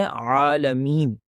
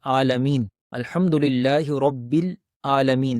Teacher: سورۃ فاتحہ کی پہلی ہی آیت کے اندر ایک اور غلطی ہے جو تلاوت کرتے ہوئے کی جاتی ہے، اور وہ لفظ ہے عالمین، عین کے ساتھ۔ تو یہ عین جو ہے یہ بھی حلق سے ادا ہوتا ہے